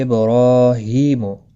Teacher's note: با ساکن پر قلقلہ ہوگا، را کے اوپر کھڑی زبر ہے، ہا کے نیچے کھڑی زیر ہے، دونوں کو ایک ایک الف کے مقدار کے برابر کھینچ کر پڑھنا ہے۔